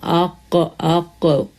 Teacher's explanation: اپر پائلٹ میں دو چیزیں ہیں، ایک تھوڑا سا بالکل حلق سے جو قریب والا حصہ ہے، بالکل کلوز ٹو حلق، جب ہم اس کو ادا کرتے ہیں تو یہ قاف ادا ہوتا ہے بالکل ڈیپسٹ پارٹ، زبان کی جڑ